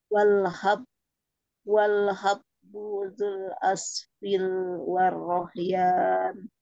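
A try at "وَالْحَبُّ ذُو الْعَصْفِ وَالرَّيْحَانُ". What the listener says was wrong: Bukan aspil, tapi aspi. Azul. Warroihan. warroihan.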